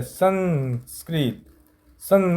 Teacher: सं मतलब नाक से निकल रहा है तो अनुस्वार